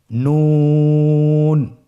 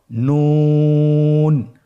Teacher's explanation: নুন হরফটি উচ্চারণের ক্ষেত্রে অবশ্যই পাতলা করে উচ্চারণ করতে হবে এবং তিন আলিফ টেনে পড়তে হবে।